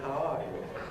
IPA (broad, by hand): haʊ ˈɑː ju